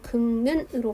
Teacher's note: 자음군 단순화를 통해서 리을을 탈락시키고 비음화를 통해서 최종적으로 극는으로 발음하게 되는 거죠